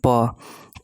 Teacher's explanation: प जो आएगा वो कहां से आएगा होट से आएगा